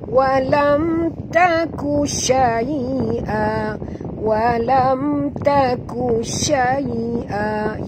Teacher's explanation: mim mati bertemu ta, tak boleh dengung. Izhar syafawi, bacaannya terang tanpa dengung